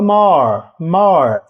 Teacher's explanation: o R é aquele r retroflex lembra o r do interior de São Paulo more more que a língua vai lá pro palato more more